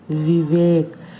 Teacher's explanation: नीचे के होंठ को ऊपर के दांतों के साथ मिलाते हुए वह बोलने का प्रयास करिए वी की ध्वनि से